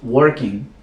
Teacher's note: la G del gerundio no se pronuncia en inglés, es un poco obsoleto hacerlo, por lo cual diríamos working, no working.